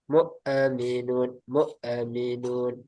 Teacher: Hamzah dia bukan huruf qalqalah. Jadi jangan sampai mantul.